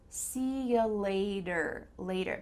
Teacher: a d here and this is common in american english that when you have a t with a vowel on both sides your t is going to change to a d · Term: sounds like a d